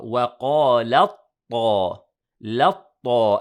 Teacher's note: وقالت the waw is light, the qaf is heavy and the alif. Then we merge the ta with the ta, so we pronounce it as a ta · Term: idgham mutajanisain